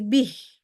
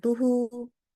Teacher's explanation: kalau kita wakaf atau kalau kita berhenti pada huruf ha damir ya maka kita wakafkan pada bentuk sukun ha